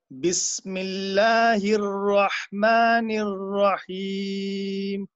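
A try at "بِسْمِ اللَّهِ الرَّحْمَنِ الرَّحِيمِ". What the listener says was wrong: ماشاء اللہ بہت اچھا، زندہ باد. آپ نے بہت اچھا پڑھا.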